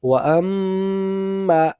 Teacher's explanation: دونوں ہونٹ جو ہیں وہ آپس میں مل جائیں گے اور پوری طرح سے ناک سے آواز آئے گی غنے کی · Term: غنہ